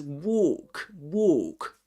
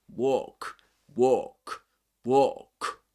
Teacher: the O is longer in British English, in these accents